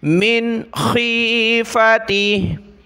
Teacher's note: नून के बाद खा है हुरूफ हल्की का हरफ, तो इसलिए हमने नून पर नाक में आवाज़ पैदा नहीं की